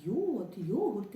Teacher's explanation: звук й приголосний м'який дзвінкий